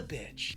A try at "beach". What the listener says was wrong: No, that long E sound. Beach. Okay, try smiling when you say it. Beach.